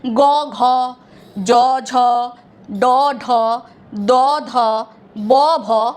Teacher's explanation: আমাদের স্বরতন্ত্রের একটা করে কম্পন হচ্ছে, তাই এগুলো হচ্ছে ঘোষ ধ্বনি